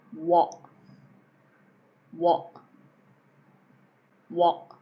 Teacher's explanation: You're just closing before you get to the T.